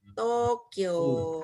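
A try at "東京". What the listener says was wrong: Nah sekarang kita udah belajar, kita tahu bahwa Tokyo itu tidak diucapkan pendek. Dia sebenarnya diucapkan panjang. Tokyo. Tokyo.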